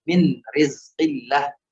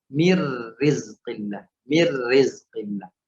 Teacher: Tidak ada suara nun sukun yang dibaca. Min rizqillah masuk langsung ke huruf ra. · Misalnya min rizqillah, misalnya min rizqillah. Nun sukunnya masuk langsung huruf ra. Mir rizqillah.